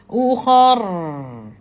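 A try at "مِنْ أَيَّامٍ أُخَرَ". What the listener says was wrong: Jadi dah u khar kakak terlaju dekat kha. Yang tu jadi setengah setengah harakat. Yang tu kita tak nak kan.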